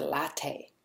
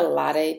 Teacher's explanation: it's still somehow marked as a borrowing because it doesn't undergo some of the regular phonological rules of North American English. So, for example, we don't flap the T here.